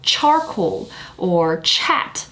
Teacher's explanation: for ch there is no vibration which means it is an unvoiced consonant · If you say a word like charcoal or chat, the vibration starts when you reach the vowel part. When you articulate the actual CH sound, you won't feel a vibration over here.